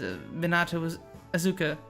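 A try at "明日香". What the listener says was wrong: Why are you saying it with like a Z? It's an S. It's quite obviously an S. Asuka. Asuka. You're saying Azuka. Asuka. There is a big difference between using a Z and using an S in like Japanese names.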